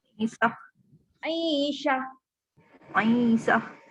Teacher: ta marbutah bila kita berhenti pada dia automatik dia bertukar menjadi huruf ha. Huruf sebab tu bunyi dia syah.